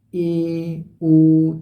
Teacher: जिन स्वरों के उच्चारण में मुख द्वार आधा बंद रहता है जैसे ए ओ तो इसमें मुख द्वार आधा बंद रहता है